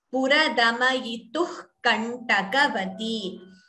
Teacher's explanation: visarga followed by ka, jihva muliya. So we chant the visarga half.